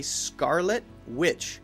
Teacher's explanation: when I say Scarlet Witch, I'm not saying the T sound. Because if I say Scarlet Witch or Scarlet Witch, it sounds a little bit too clear.